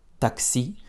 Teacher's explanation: puisque en français nous accentuons les mots sur la fin taxis et du coup notre a est quasiment pas réduit · Avec un accent tonique qui tombe sur le I, puisque c'est un mot d'origine française. Tous les mots qui sont importés de la France vont prendre un accent tonique sur la fin, puisqu'en français, nous accentuons les mots sur la fin. · notre A est quasiment pas réduit, puisque le A est une des seules voyelles qui va très peu se réduire.